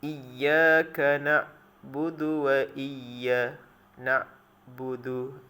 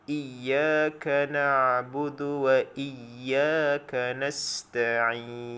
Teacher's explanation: Ain ni dia ada sifat tawassut. Suara dia mesti sederhana keluar.